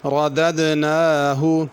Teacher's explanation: ردد کی دال پہ قلقلہ ہے، نون کو ذرا کھینچنا، کھڑی زبر ہے